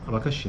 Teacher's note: a vogal tônica está lá no final naquele i · na palavra abacaxi né as vogais pretônicas são todas a